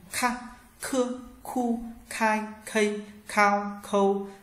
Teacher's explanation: Tiếp theo ta có chữ K, bạn nhớ bật hơi nhé